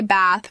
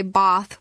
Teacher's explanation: British speakers use a longer a sound like the a in father. So, Americans say bath with a short vowel while British speakers say bath with a longer vowel.